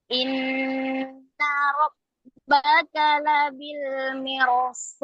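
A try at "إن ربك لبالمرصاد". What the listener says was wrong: Labil, jangan terlalu dalam. Rabbaka labil mirsad.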